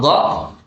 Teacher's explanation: maka sisi dari lidah kita itu ditempelkan ke arah langit-langitnya mulut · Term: makhrajnya dha